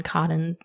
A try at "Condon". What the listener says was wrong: I thought it was Condon. Condon. There's an N